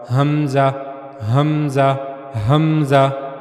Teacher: गले का जो सबसे निचला हिस्सा है सीने की तरफ वाला वहीं से हमजा भी अदा होगा। हमजा हमजा हमजा ये हा और हमजा ये दोनों ऐसे हरूफ हैं कि इनकी अदायगी के लिए आपको काफी सारी मशक करनी पड़ेगी। · حمزہ وہ بھی گلے کا جو سب سے نچلا حصہ ہے سینے کی طرف والا، وہیں سے حمزہ بھی ادا ہوگا۔